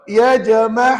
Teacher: pastikan tengah-tengah kerongkong bunyi H pedas